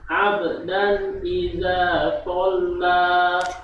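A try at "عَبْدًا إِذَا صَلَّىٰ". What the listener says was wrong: Fa tolla. Sifat sofirnya harus ada. Fa as so as si as su iza tolla fa tolla.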